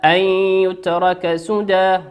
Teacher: نون ساكنة أتى بعدها حرف الياء، والياء من حروف الإدغام بغنة يغن بمقدار حركتين